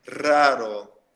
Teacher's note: Porém, depois tem outro R no meio da frase, no meio da palavra. Então, a gente fala como se fosse um R normal, não precisa vibrar o R.